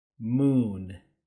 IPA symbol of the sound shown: u: